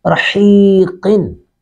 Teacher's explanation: را کو پر کریں گے، حا کو حلق سے ادا کریں گے، قاف کو بھی پر کریں گے